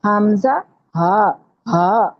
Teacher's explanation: یہ دونوں حروف حلق کے نچلے حصے سے ادا ہوتے ہیں جو ہمارے سینے کی طرف ہے. حمزہ، ہا، ہا، اس طرح ادا کریں گے اس کو، ہا نہیں اس کو بولیں گے، حمزہ، ہا. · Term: انتہائی حلق